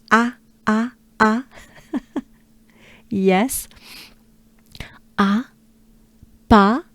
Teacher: French A, very open and exaggerated.